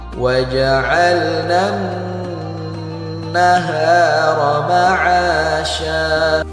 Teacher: nun yang bertasydid harus kita dengungkan 2 harokat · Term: gunnah